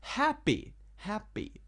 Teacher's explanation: The first syllable is pronounced stronger.